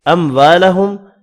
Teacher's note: اموالہم، میم کا اظہار ہوگا